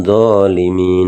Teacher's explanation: Nah, ini baru yang dinamakan alif lam samsiyah, kan alif lamnya tidak terbaca teman-teman ya. Yang dibaca langsung huruf setelahnya